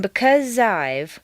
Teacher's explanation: the z sound at the end of because and the I sound of I blend together smoothly